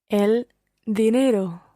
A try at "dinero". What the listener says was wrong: You should make sure that your tongue comes between your teeth when you're saying it. Dinero, dinero, as opposed to dinero, where your tongue is above the back of your teeth. Dinero.